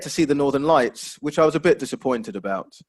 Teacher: northern lights which i was a bit disappointed about so again that falling intonation just to show the fact that there's a bit of disappointment there